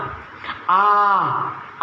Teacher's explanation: विवृत्त का अर्थ हुआ मुख का पूरा खुलना। आ बोलते तब हमारा मुंह पूरा खुल जाता है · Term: विवृत्त स्वर